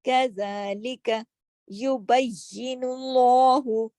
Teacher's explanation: یبی سختی سے پڑھنا ہے. کیوں؟ یا پہ تشدید ہے، 2 یا ہیں، بئی اور یا زیر یہ، یبی 2 یا ادا کرنے ہیں.